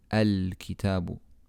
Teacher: when we start on the hamza al-wasal we pronounce the alif with a fatha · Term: hamzatul